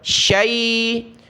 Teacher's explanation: یہ شی پڑھنا معروف، اس کو بھی شے نہیں پڑھنا